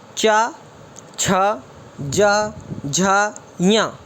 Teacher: यहाँ से आप बोलते हैं चा वर्ग के, और चा वर्ग के अंदर क्या क्या आता है, चा, छ, ज, झ, ञ, ये सभी तालु से बोले जाते हैं।